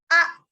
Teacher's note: Dia keluar dengan merapatkan kedua peti suara. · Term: hamzah sukun